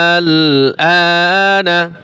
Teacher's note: আ কয়ে 4 আলিফ টান দিতে হবে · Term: মদ্দে লাজিম কালমি মুখাফফাফ